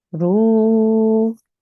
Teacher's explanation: you would elongate the ra and the waw because this is a waw mushaddad. So we will say that for 2 seconds.